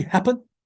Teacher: What happens? Schwa between p and m drops. A receives the primary stress. M receives a weak stress.